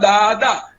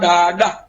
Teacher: પછી ગ 3 છે, ક 3 છે, ઝ નથી અને દંત્ય દ જેમાં આપણી જીભ દાંતને સ્પર્શે ને આપણે બોલીએ દાદા, દાદી, એના માટે કચ્છીમાં મૂર્ધન્ય ડ છે જેમાં જીભ આપણા કાળવાને સ્પર્શે